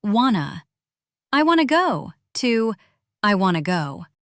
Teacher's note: The T disappears completely.